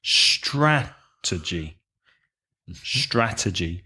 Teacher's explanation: you have three syllables stress the first syllable